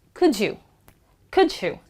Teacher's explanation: The D actually gets quashed as J.